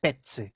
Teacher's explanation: Então, em espanhol, deu uma pronúncia mais ou menos assim, petse, petse. Esse C era uma pronúncia mais forte, como o TS